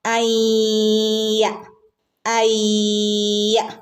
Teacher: നൂനിന് ശേഷം യ ആണ് വരുന്നത് എങ്കിൽ എന്ത് ചെയ്യണം? മണിച്ചു കൂട്ടിച്ചേർത്ത് ഓതണം കേട്ടോ. അയ്യ അയ്യ ഇങ്ങനെ.